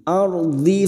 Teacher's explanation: Ra sukun yang sebelumnya fathah kita baca tafkim